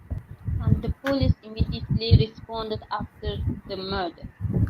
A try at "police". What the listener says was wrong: Okay, not police, but police. Quick, because the stress is on the second. Police. The police.